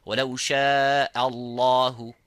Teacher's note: So only the lafzul jalala have to be full mouth. وَلَوْ شَاءَ, not وَلَوْ شَاءَ Allah, وَلَوْ شَاءَ اللَّهُ.